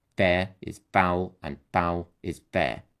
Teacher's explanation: these lines use a trochaic meter which is a pattern of a stressed syllable followed by an unstressed syllable